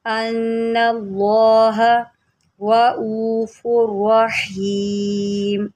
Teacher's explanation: वलौला फद्लुल्लाहि, वलौला फद्लुल्लाहि अलैकुम वरहमतुहु व अन्नल्लाह, नून मुशद्दिद है, गुन्ना करें। अन्नल्लाह, अल्लाह के लाम को मोटा पढ़ें